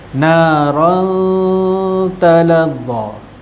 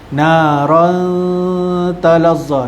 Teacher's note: Ikfa hakiki, tanwin bertemu dengan huruf ta, dengungkan bacaan dengan memasukkan huruf ikfa ke dalam dengung.